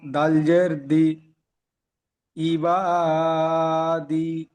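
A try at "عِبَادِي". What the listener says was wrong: দাল যে দি বলছেন, দাল অক্ষরটি আলিফ থেকে ইয়া পর্যন্ত তিন আলিফ টান দিয়ে পড়ছিলেন দাল অক্ষরটি। দাল জের দি, ঠিক এমন দাল অক্ষরটি টান দেবেন।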